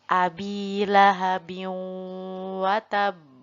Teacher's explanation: nun atau tanwin tersebut dilebur langsung pada huruf berikutnya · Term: idgham bi gunnah